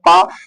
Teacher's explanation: प का जो उच्चारण स्थान है वो ओष्ठ है